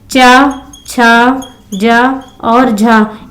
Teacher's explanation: तो इनका जब उच्चारण करते हैं तो इनको स्पर्श भी करना पड़ता है और संघर्षण भी होता है। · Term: स्पर्श संघर्षी